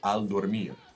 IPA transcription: al.doɾ.ˈmiɾ